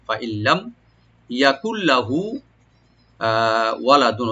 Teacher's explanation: নুন সাকিন পর যেহেতু লাম আসছে এখানে ওই ইদগাম হবে গুণনা ছাড়া। ফাইল্লাম ইয়াকুল লাহু, হুতে একলা টানবেন, ওয়ালাদু, ওয়ালাদু, ওয়া ওপেন রাখবেন, লাম ওপেন থাকবেন, আর তার উপর যে তানবিন আছে এটা ওয়ার সাথে মিলে পড়বে ইদগাম উইথ গুন্না।